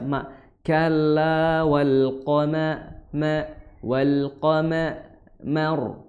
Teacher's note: Mim yang harusnya membuka mulutnya dengan sedikit meringis karena dia hukumnya tipis, ikut ditebalkan ya, karena sudah mengucapkan qaf tadi, ko mo, jadi seperti itu.